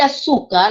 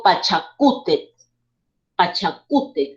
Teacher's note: la mayor fuerza de voz radica en la penúltima sílaba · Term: paroxítonas